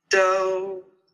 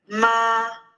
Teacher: a prolonged sustained sound which is the first tone in pinion in Chinese